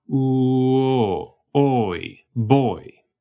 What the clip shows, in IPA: u...o oɪ̯